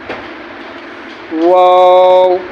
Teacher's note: واو میں ہونٹ گول ہوتے ہیں۔